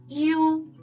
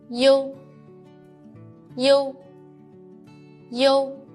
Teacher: When you pronounce the final u, make the e sound, then quickly switch to o, u.